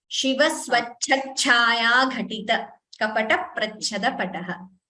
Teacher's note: The second line, the Mahapranas could be clearer, especially the cha.